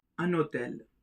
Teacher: Because of the presence of the mute H, the N gets connected with the O. That is, the liaison takes place.